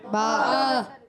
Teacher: با ادا ہوتا ہے دونوں ہونٹوں کے تر حصے سے